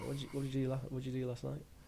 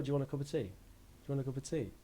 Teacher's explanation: so i think both of those actually sounded like falling to me